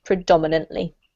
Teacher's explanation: So dominant is that word there, and it's the same emphasis. We keep the emphasis on the dom, predominantly.